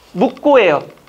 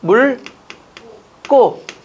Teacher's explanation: 기역으로 시작되는 어미 앞에서는 리을로 발음된다